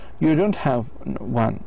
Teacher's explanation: if your intonation goes down low and then up high at the end